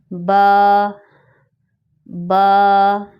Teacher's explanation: یہ لیٹر ہمارے دونوں ہونٹوں کے تر حصے سے ادا کیا جاتا ہے۔ جب ہم اپنے ہونٹوں کو بالکل نارمل طریقے سے ملاتے ہیں تو ہمارے ہونٹ آپس میں چپک جاتے ہیں، اسی جگہ سے با ادا کی جاتی ہے، با با۔